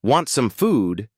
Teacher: Your cat hears rising pitch at the end, high frequency, moderate volume, positive emotional tone.